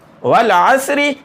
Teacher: واو لام زبر ول، عین صاد زبر عس، والعس، را زیر ری، والعسری. یہاں را کو باریک پڑھنا ہے کیونکہ اس کے نیچے زیر ہے